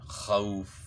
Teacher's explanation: واو ساکن سے پہلے زبر ہے تو واولین ہے، تو اس کو نرمی کے ساتھ پڑھنا ہے